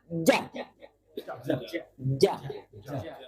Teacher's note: Lidah bagian tengah dengan langit-langit yang di atasnya.